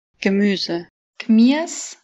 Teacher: Le I et le U long deviennent IA.